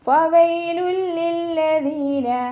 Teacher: നമ്മുടെ മേലെ മുൻപല്ലിൻ്റെ അറ്റം താഴെ ചുണ്ടിൻ്റെ ഉൾവശത്ത്